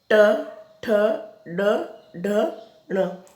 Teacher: इसमें आपको पता है जीभ अपने आप स्वतः ही मुड़ जाती है अंदर की तरफ, है ना, स्वतः ही अंदर की तरफ मुड़ जाती है आपकी जीभ।